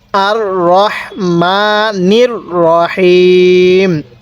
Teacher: এই শেষের ওয়াকফের কারণে তিন আলিফ টান দিবেন কারণ আমরা যেই হরফের মধ্যে ওয়াকফ করব তার পূর্বের হরফ দেখব